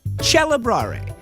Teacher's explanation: This is exactly what happened as Italian developed. When the C is followed by an E, the K became a ch.